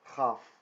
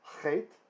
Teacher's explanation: Lach, and this is Ch, Melech. The difference is that this is made in the palate of the mouth, the Chaf. Whereas the Chet is made further back towards the throat.